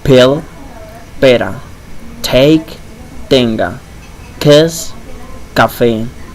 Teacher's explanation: The p, t, k sounds, which are plosive in English, are softer in Spanish.